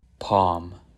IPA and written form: pɑm (PALM)